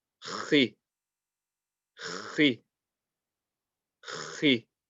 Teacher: The sound comes from the top of the throat. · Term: kha